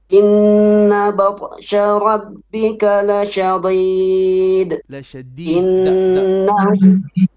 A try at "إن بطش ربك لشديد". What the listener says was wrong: Dal is flat, brother, not deed. لشديد.